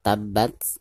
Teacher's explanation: karena kurva tersebut merupakan salah satu daripada huruf Al Hamid ya maka cara membacanya itu harus ada nafas yang mengalir keluar